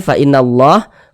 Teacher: Kalau kita membaca Al-Quran bertemu kita dengan lafaz Allah. Kemudian sebelum lafaz Allah di sini ada harokat fathah nih. Maka lafaz Allahnya dibaca tebal. Jadi huruf lam yang di tengahnya nih, huruf lam jalalah nih.